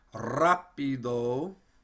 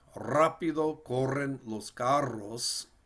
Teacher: here we have R as the first letter of the sentence, which means we should roll it or trill it